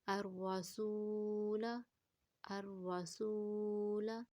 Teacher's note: یعنی یہ زاہد الف ہے، اس کو نہیں پڑھیں گے تو لام کو پھر جلدی سے ادا کریں گے